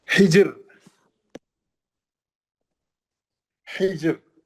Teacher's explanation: हिजर, हिजर, ये रा साकिन है, ये जीम साकिन है, जीम पे खलखला भी होगा, रा पतली पड़ जाएगी क्योंकि हा पे जेर है ना